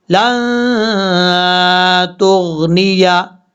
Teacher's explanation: لام کے بعد جو نون ہے یہاں پر ایک الف کی مقدار غنہ کریں گے نون ساکن کی وجہ سے